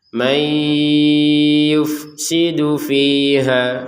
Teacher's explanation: Kemudian di sini man, ya, ada ya di depannya maka kita masukkan nun sukunnya kepada huruf ya sehingga terbacanya may. Jadi yang awalnya terbacanya man Dengan adanya huruf ya ini dimasukkan sehingga terjadinya ada perubahan cara membacanya dari man menjadi mai.